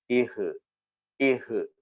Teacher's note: എന്ന അക്ഷരവും എന്ന അക്ഷരവും തൊണ്ടക്കുഴിയിൽ നിന്നാണ് വരുന്നത് ഒന്ന് കാറ്റിനെ തടഞ്ഞു നിർത്തുകയും ഒന്ന് ഹ് എന്ന് പറയുമ്പോൾ കാറ്റ് പുറത്തേക്ക് വരുകയും ചെയ്യും ഇഹ് ഇഹ് അതുകൊണ്ട് അങ്ങനെ തന്നെ അതിനെ പരിശീലിക്കണം പക്ഷെ തൊണ്ടക്കുഴിയിൽ നിന്ന് തന്നെ